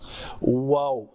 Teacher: ہونٹوں سے ادا ہو رہا ہے، گول کر رہا ہے، زبان کہیں ٹچ نہیں کر رہی